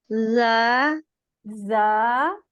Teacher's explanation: जबान का नोक जो है वो नीचे के सामने के दो दांतों के मसूड़ों से लगेगी। जा, जा, नीचे के दांतों के। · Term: जोर वाला जा